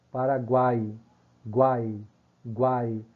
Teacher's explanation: Paraguai, você tem U, semivogal, A, vogal, I, semivogal. · Pronuncie a palavra Paraguai. Então, o U é passagem, o A, aquele impacto, aquela força, e o I, perdendo, né? Perdendo força. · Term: tritongo